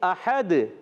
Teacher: احد وقف کرنے میں دو پیش کو ساکن کر دیں گے، آواز آئے گی احد. کلکلا ہو جائے گا دال میں، آواز لوٹ کر آئے گی